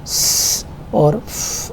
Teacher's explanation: تو آپ کو غرنگ کی آواز نہیں سنائی دے گی، لہٰذا یہ وائس لیس ہے